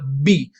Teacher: जब आप बी बोलेंगे तो आप देखेंगे कि आप अपने दोनों लिप्स को बंद करके एयर को रोक रहे हैं। बी, बी पहले रोक रहे हैं फिर आप छोड़ रहे हैं। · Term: ऑब्स्ट्रक्शन ऑफ एयर